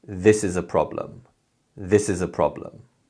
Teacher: When we say this sentence, we put more emphasis on the word this and the first syllable of problem. And other words and syllables become weak sounds. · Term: stress